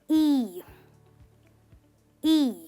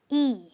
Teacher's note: This is a long sound, which means that your lips are spread when you are saying it, as if you are smiling.